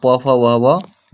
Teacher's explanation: प वर्ग जो होता है हमेशा ओष्ठ में बोला जाता है